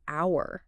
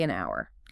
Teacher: Starts with H, a consonant letter. But that H is totally silent, isn't it?